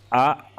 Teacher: तो छोटा आ और बड़ा जो है वो कहां से बोला जाता है यह आपका कंठ से बोला जाता है